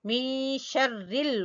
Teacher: پڑھیں گے می شرل، نون کی آواز کو چھپائیں گے، شرل، را کو باریک پڑھیں گے کیونکہ را کے نیچے زیر ہے